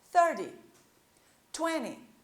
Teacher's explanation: Já aqui dos números do 20 até o 90, a primeira parte da palavra que vai ser mais forte